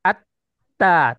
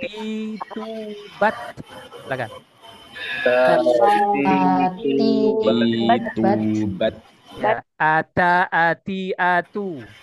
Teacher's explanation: salah satunya masuk ke huruf th Dal ta th Dal Ta ini adalah makhjnya ujung lidah bertemu pangkal gigi seri atas